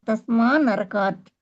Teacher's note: తకారానికి న అనే అనునాసికం పరమఅవ్వడం వలన తకారం ఆ వర్గ అనునాసికమైన నగా మారిపోతుంది